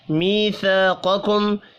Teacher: یا مدہ اور الف مدہ یہاں بھی ایک ایک الف کے برابر کھینچ کر پڑھے جائیں گے۔ قاف حروف مستعلیہ ہے، پر پڑھیں گے۔